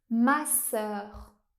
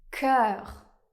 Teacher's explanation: il existe aussi le son /œ/ ouvert, comme dans le mot masseur